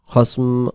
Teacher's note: খস বলা পরে মুখটা মিলাই দিব মিমের মতো